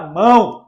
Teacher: Já o ditongo nasal, ele tem o quê? A onda de sair um pouco pelo nariz.